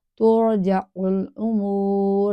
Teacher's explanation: آگے را ساکنہ کا وہی رول ہے کہ را ساکنہ اس سے پہلے پیش ہے، تو اس کو پر پڑھا جائے گا